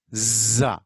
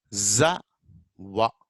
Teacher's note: When you say za, you can feel the vibration of your vocal cords. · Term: voiced